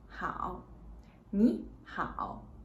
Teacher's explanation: when there are two third tone get together the first third tone will change to the second and the second will remain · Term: third tone chain rule